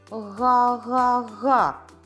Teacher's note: звук г приголосний а звук твердий чи м'який г так твердий а дзвінкий звук чи глухий дзвінкий тому що горло працює